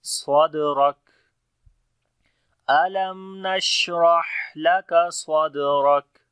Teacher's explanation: صاد اور دال کے اوپر جو قلقلہ ہوگا کمزور ہوگا